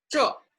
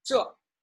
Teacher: falling tone, quite firm, sounds a little bit harsh or rude, you may say